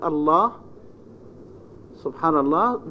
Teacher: However, coming finally or before a consonant, then it is considered as dark L. In Arabic, we have only the L sound, which is light L, except only in the name of Allah the Almighty.